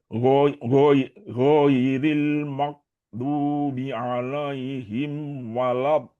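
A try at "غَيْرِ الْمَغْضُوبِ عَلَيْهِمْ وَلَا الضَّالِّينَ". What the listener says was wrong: tinggal yang di lam itu masih agak tebal ya ghairil magdubi ala ini tebal wala ini juga ikutan tebal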